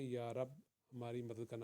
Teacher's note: یا رب ہماری مدد کرنا، اردو میں پڑھیں گے یا رب ہماری مدد کرنا، با کا قلقلہ کرنے کی ضرورت نہیں اردو کے اندر